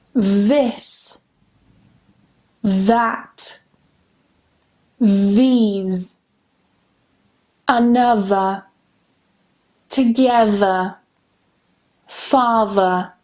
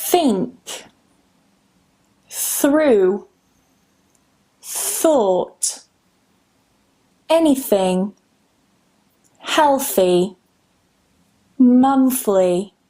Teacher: tilimizni uchini ikkita tishni orasiga qo'ygan holda hosil qilishimiz kerak bo'ladi bu tovushni